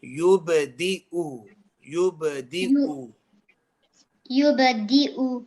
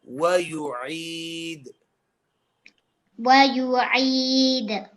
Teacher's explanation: The first one is going to be from your aqsa al-halq, the first part of your throat. The second one is going to be from the middle of your throat. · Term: hamza